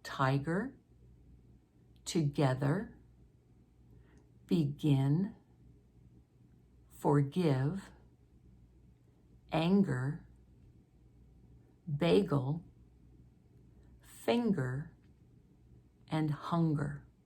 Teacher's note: where the G sound is in the middle of the word and we would expect that soft G but it's a hard G instead